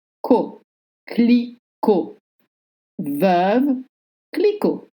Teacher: You don't pronounce the T at the end.